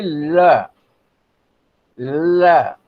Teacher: जिस ध्वनि के उच्चारण में जीभ बीच में स्पर्श करे, हवा एक या दोनों पार्श्वों से निकल जाए, तो इस ध्वनि के लिए ल, ल एकदम शुद्ध ध्वनि ल जो है वो क्या, वो पार्श्विक ध्वनि है, ल।